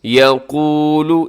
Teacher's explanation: یقول، اس میں قاف موٹا پڑا جائے گا